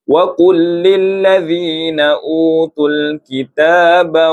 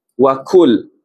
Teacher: Jadi qaf dengan kaf bezanya tebal dengan nipis.